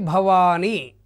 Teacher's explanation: భ లఘువు అవుతుంది వా దీర్ఘం ఉంది కాబట్టి గురువు అవుతుంది ని లఘువు అవుతుంది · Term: జగనం